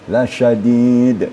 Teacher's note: sifat shinnya sedikit lagi lebih menyembur gitu ya, lebih tafasyi